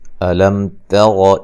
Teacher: میم ساکن کا اظہار ہے